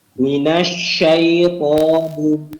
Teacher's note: huruf syin seperti yang kita sampaikan tadi itu keluar dari tengah-tengah lidah. Suara dan angin itu menyebar di mulut. Ya, as sifat tafasyinya ini yang perlu dijelaskan lagi.